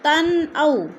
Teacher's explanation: تن او، 2 زبر تن یعنی اظہار، 2 زبر تنوین، اگر حروف ہلکی میں سے حمزہ آ گیا ہے تو ادھر اظہار ہو رہا ہے، اخفا نہیں کریں گے